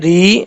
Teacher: را کے نیچے جب زیر ہوتا ہے را بریک پڑھا جاتا ہے، اس کو پر پڑھنے کی ضرورت نہیں ہے اس وقت، پیش ہو زبر ہو یہ حالتیں جو ہے وہ پر پڑھنے میں ہے۔